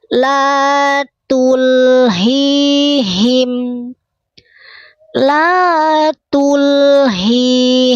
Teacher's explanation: sama-sama dari tenggorokan bagian bawah ha besar